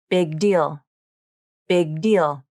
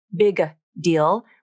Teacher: For the K and G consonants, this means the back of the tongue touches the soft palate, then it remains in contact with the soft palate at the end of the sound. This is called an unreleased consonant.